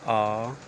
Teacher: विवृत स्वर मुख द्वार पूरा खुल जाता है, जैसे कहेंगे आ।